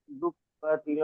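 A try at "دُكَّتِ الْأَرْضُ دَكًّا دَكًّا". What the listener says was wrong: দুক্কাতি নয়, দুক্কাতিল, তাল আমজের তিল। হুম, দাক্কা, দাক্কা, শেষে দু জাবার আছে না, এক জাবারকে ছেড়ে এক আলিফ টান দিয়ে পড়তে হবে।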